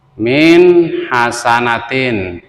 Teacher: Min hasanatin ini termasuk contoh daripada nun mati bertebu dengan ha nun mati bertemu dengan ha Harus baca izhar nunnya